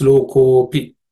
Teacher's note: the ko becomes a little longer and the A is silent